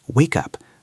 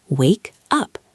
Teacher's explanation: The word up starts with a U sound. When we connect them, the K moves over. It sounds like wake up, like a cup on a table.